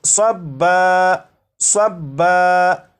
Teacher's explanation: یہ جو لفظ ہے یہ ہے صبن، صبن، وقف میں اسے پڑھیں گے صبا، صبا، یعنی دو زبر کو الف سے بدل کر